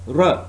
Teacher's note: Slight narrowing, not enough to cause friction, and the sound is r. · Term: frictionless continuant